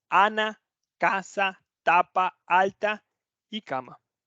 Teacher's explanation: una eso es nasalizado si nosotros no queremos esa vocal nasalizada no queremos esa nasalización de la vocal a Ok entonces Ana siempre abierta Ana casa tapa alta y cama